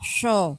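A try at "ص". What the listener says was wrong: Ah, jadi nggak pakai sho. pakai udara yang ada di dalam. Ah, jadi so itu hanya ada di lisan di depan. So itu tempatnya di depan.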